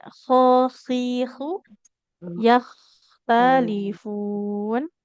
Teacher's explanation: hurufnya ada di tenggorokan paling atas, ujung tenggorokan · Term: huruf kho